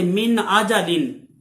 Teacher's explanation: بغیر کسی تبدیلی کے یہ نون جو ہے بغیر غنہ کے ادا کیا جائے گا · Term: اظہار ہلکی